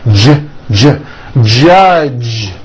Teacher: The J sound in American English is always voiced.